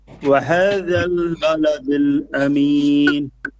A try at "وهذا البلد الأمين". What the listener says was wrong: It's flat.